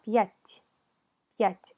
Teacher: ¿Qué pasó con la T? La T se suavizó. Empezó a sonar como si tuviera una I al final, ¿cierto?